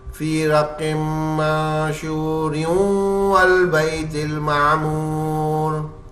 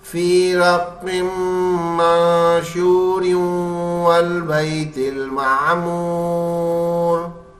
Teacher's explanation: تنوین کے بعد واو حرف آ رہا ہے، اس لیے یہ نون کی آواز کو نکالے گا بیچ سے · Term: غنہ